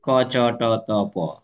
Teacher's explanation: ক চ ট ত প শুধু উচ্চারণের স্থানটা ভিন্ন। কিন্তু বাতাসের চাপের লেবেল একই। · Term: বাতাসের চাপের লেভেল একই